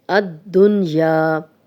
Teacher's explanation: جزم والے نون ہونے کے باوجود غنہ نہیں کیا جاتا، یعنی نون کو ظاہر کر کے پڑھتے ہیں